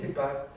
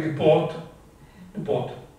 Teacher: Là où nous, dans le sud, nous jouons sur la longueur, les Parisiens jouent sur le timbre.